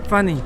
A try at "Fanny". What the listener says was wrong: No, like with an A.